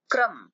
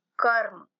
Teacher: क को पूरा बोलना है, अ मिलाकर, कर्म, और र आधा है, र को बिना अ के बोलना है